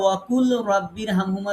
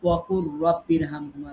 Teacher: কেন পড়ি, কারণ র আর লাম কাছাকাছি মাখরাজ, সিফাতও আলাদা, বাট এই কাছাকাছি মাখরাজের দুইটা হরফ পাশাপাশি আসার কারণে আমরা একটা হরফকে বাদ রাখি আর একটা হরফকে আমরা তাসদিদ দিয়ে পড়ি। এই জন্য আমরা ওয়াকুল রব্বির হামহুমা না বলে আমরা বলি ওয়াকুর রব্বির হামহুমা, লামকে বাদ দিয়ে পড়ি। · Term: ঈদগামে মুতাকারিবাইন